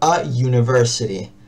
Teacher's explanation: Bien, por ejemplo, a university, como no se pronuncian igual, como hay ya una división de, o sea, con la con la u que se le pronuncia you, ya tengo una división marcada, ya tengo un corte